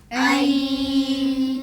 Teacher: the hamza will join to the ya, but the ghunna sound of the nun still remains.